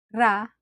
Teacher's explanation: Unlike the English R, where the tongue does not touch the side of your mouth, the Tagalog R is produced by quickly tapping the tip of your tongue on the gum ridge behind the upper teeth. Much like the Spanish, but it's not rolled or trilled.